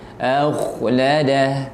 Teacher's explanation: Kha itu mengalir nafasnya, mengalir suaranya.